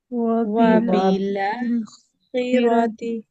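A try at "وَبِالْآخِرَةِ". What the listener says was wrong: ہاں رو بھی باریک کریں گے نا، ورشہ. وبیلا خیرتی.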